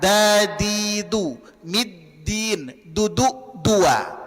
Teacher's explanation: makhraj dal perlu dipahami dan perlu dilatih berada di belakang gigi seri atas ya. Ujung lidah ditempelkan ke usul anana alulya.